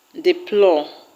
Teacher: The word deplore will have its stress on plore.